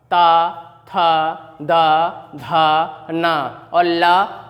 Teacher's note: इन वर्णों का उच्चारण स्थान जो है वह दंत माने दांत है